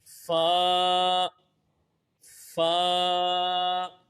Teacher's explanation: اوپر کے دانتوں کے کنارے نچلے ہونٹ کے تر حصے سے ادا ہوگا